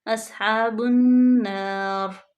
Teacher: با کو ڈائریکٹ نون میں ملائیں گے کیونکہ نون مشدد بھی، اس پہ غنہ بھی پیدا کریں گے، روکیں گے، اصحاب النار۔